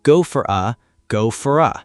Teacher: The O in for disappears.